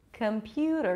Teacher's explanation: There is no O. There is no E at the end. It's not computer, computer. Schwa at the beginning, schwa at the end.